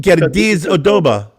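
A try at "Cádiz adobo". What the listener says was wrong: Where's the R? There's no R.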